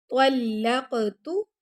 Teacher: طلق کاف پر ہم قلقلہ کریں گے